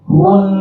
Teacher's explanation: Nun di akhir tetap dipanjangkan. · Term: tasydid